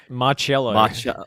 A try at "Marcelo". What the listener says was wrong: Marcello. It's Marcelo. You just used the wrong C.